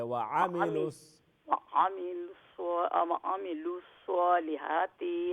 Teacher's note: आइन को लंबा ना करे